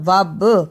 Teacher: با پر جزم کی صورت میں قلقلہ کرنا